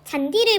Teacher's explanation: 하나의 형태소 내부에서 지금 디귿과 이가 만나고 있죠. 하나의 형태소 내부에서 디귿과 이가 만날 때는 굳이 이 디귿을 지읒으로 구개음화 시킬 필요가 없습니다